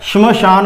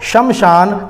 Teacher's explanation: यहां श पूरा नहीं आएगा, आधा श आएगा, श्मशान बोलेंगे इसको, शमशान हम बोलते हैं, गलत है।